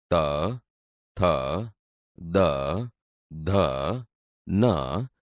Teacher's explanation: વ્યંજન બોલતી વખતે જીભ દાંતને અડે છે. આથી તે દંત્ય વ્યંજન છે.